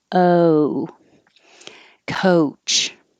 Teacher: the american o doesn't stay in one spot · starting with the tongue low in the middle oh and then rising in the back